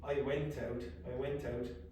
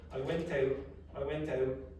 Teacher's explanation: very very often I won't pronounce the T